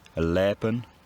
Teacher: the voiceless hl sound merges with voiced l, and then leben becomes leper, and then lep.